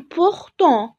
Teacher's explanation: وطبعا مش هنطق الحرف T في الآخر